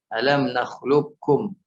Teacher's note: Jadi langsung ke huruf kaf, tidak disertakan huruf qafnya. Ya, itu idgham yang dilihat dari atau ditinjau dari sisi sempurna, dari sisi makhraj dan sifatnya. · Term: idgham mutaqarribain